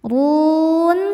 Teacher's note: Huruf ro dibaca tafkhim karena berharakat dommah maka dibacanya tebal. Run saat berhenti di sini hukumnya mad arid lisukun.